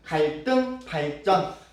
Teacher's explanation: 한자인 경우 리을 뒤에 우리가 디귿 또는 지읒 또는 시옷 이런 것들은 된 소리로 발음을 합니다